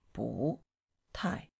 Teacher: So, here, 不 and 太, two falling tones together. The fourth falling tone going up, it turns into rising